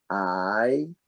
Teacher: changing vowel or a diphthong that one is i so it starts wide open and it moves towards the middle of your tongue raising up and almost touching the roof of your mouth